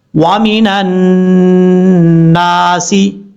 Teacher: نون کو جب نون کے ساتھ کنیکٹ کریں گے تو بیچ میں الف اور لام ہے، ان دونوں حرفوں کو چھوڑ دیں گے، نون کے اوپر غنہ ہے، ایک الف کی مقدار غنہ کر کے پڑھیں گے شد کی وجہ سے